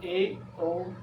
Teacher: अर्ध संवर्त में यानी संवर्त से अधिक मुंह खुलता है